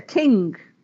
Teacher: there is an extra breath of air behind these sounds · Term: aspiration